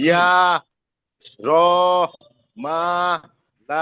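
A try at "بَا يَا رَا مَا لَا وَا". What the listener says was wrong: এই শেষের দিকে কেমন যেন একটা, মানে একটা ধরা ধরা একটা চাপ দিয়ে, চাপ হয়ে যাচ্ছে। আমরা মাদের উচ্চারণটা মুখের খালি জায়গা থেকে হবে। জাউফে, জাউফ একবারে আম, মুখের খালি জায়গা, যেমন বা, বাতার সাথে সে উড়ে যাবে না। আমি যদি বা, আ, ইয়া, র, কেমন যেন পরে একটা হামজা চলে আসে, এরকম হবে না।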